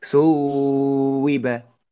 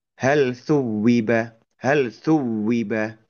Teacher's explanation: Maka huruf wau wawu tasdid ini itu hanya diucapkannya hanya dengan menekankan penyempitan dua dua belah bibir itu aja